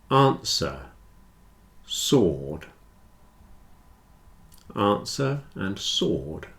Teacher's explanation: Answer and sword have no W.